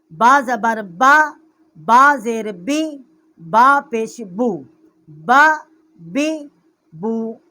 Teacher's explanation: یہ با کا جو مخرج ہے یہ با ہونٹوں کی تری سے ادا ہوتی ہے، اس لیے اس کو بحری کہتے ہیں